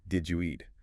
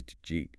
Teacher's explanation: Another classic example is, did you eat? Which often becomes just jeet.